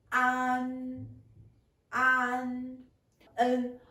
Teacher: La position de la langue est basse. Et le devant de la langue touche les incisives inférieures. Et l'air sort par nez.